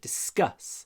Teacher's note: А в начале это д почти исчезает.